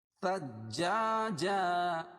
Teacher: ثجاجا اور سا کو جیم میں تشدید ہے سختی کے ساتھ ملائیں گے. اور جا الف سے پہلے زبر اس لیے الف مدہ.